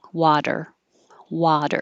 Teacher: I'm gonna use a knee even though it's a flap water it's very quick water but just think of it as a d and you won't sound wrong · And the vowel is ah, as in hot.